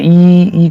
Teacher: जैसे ई करके आप बोलेंगे तो जीभ आगे की तरफ प्रयास करेगी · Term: अग्र स्वर